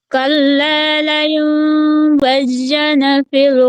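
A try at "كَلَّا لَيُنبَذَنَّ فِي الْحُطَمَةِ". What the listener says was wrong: Gumamit ka pa rin ng sadda dito sa, sabi mo pa rin na bazan. Yung bigkas mo na bazan ay palitan mo ng wazan na fil. Wazan na fil. Ngabe, panggamit ka sa sadda siya sa zalane. Bazan na. Dapat, ang correct ay wazan na fil khutama.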